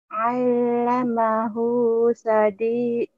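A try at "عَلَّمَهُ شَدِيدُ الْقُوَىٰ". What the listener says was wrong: Aduh, shinnya kemana? Kemana? Kemana? Ku cari shinnya hilang. Salah alamat kata shinnya. Shin, ayo cobalah.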